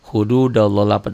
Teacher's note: Allahnya dibaca tebal tafhim karena sebelum lafad Allah baris di atas atau Fatah